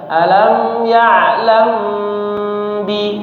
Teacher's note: Perhatikan, alam ya'lam bi, ya'lam bi didengungkan ya, ikhfa syafawi ya. Bibirnya yang paling mudah itu bibirnya dirapatkan saja tapi didengungkan, dipanjangkan ya. Gunnah mutawwalah, gunnahnya dipanjangkan.